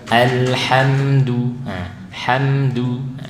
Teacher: Tawasud al sambung ke ha, mimnya sambung ke dal, tidak boleh putus.